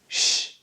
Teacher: We don't vibrate here, we don't use our vocal cords, so we call it an unvoiced sound.